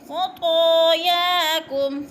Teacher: خا موٹے حروف میں سے ہے، پر کر کے پڑھیں گے، اور طا بھی موٹے حروف میں سے ہے، پر کر کے پڑھیں گے.